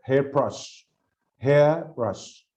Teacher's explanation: because it's used as a verb present present compound nouns [Music] usually they have two stresses but the first noun is more stressed than the other